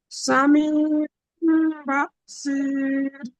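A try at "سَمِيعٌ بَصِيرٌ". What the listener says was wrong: জি, ফের পড়ুন, টানটি হয়নি এখানে, একালি টান দিন। ইয়ায় সামি।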